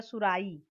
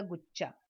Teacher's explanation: महाप्राण के बदले अल्प प्राण का प्रयोग होता है। जैसे सुराही, ह जो है वो महाप्राण ध्वनि, उसकी जगह सुराई।